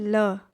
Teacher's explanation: जो हमारी जीभ तालू को जीभ का जो आगे का भाग होता है वो तालू को टच करता है और अगल बगल से हवा बाहर निकल जाती है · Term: पार्श्विक व्यंजन